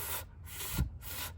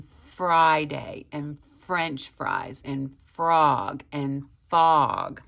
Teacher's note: sound a lot alike but when you make the F sound you put your teeth on your bottom lip your top teeth on your bottom lip and you blow f like in Friday and french fries and frog and fog